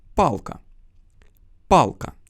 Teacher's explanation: Получается, что когда язык поднимается к твердому небу, звук мягкий, а когда к мягкому небу, то звук твердый. И вот этот вот твердый задний Л оттягивает звук А назад так сильно, что тот немного меняет звучание и становится задним А